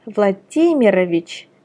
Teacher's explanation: For example, Vladimir, where the stress is on I on the first name, which becomes Vladimirovich, and the stress is still the same on I in the patronymic